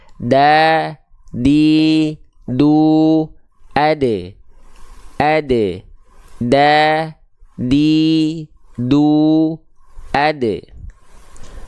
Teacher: Nah, ujung lidah kita tuh, ya, nempel ke pangkal gigi seri atas kita. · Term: huruf dal